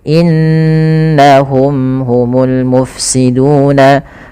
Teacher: Ala innahum, kemudian pada lafal inna, yaitu adalah lafal gunnah sebagaimana innama, ditahan dulu. Kesalahan yang terjadi adalah tidak menahan gunnahnya, hanya innama.